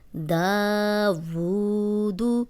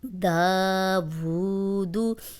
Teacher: الف مدہ ہے، اس کو ہم 2 حرکات لمبا کریں گے